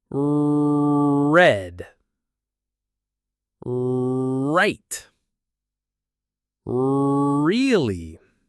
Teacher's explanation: Another sound that can be difficult is the R sound, like in red or right. In English, the R sound is made with your tongue high in your mouth, not touching the top.